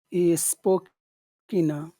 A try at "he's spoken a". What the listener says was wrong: spoken a. Longer. Make the vowel sound longer. He's spoken a.